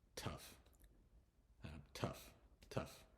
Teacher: the GH becomes an F sound